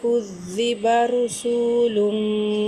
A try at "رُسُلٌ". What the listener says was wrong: মাদ দেন না, রুসু তো মাদ নাই। কফের, কফের মাখাজটা একটু খেয়াল রাখেন।